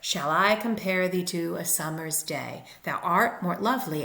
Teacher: each unit or each foot of the poem is an unstressed followed by a stressed syllable, and in this case, times 5, pentameter. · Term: iambic